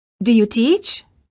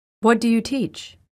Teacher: the first question of the pair has Rising intonation and the second has falling intonation